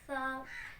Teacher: जुबान की नोक को ऊपर सामने वाले 2 दांतों के सिरे से लगाकर अदा होता है।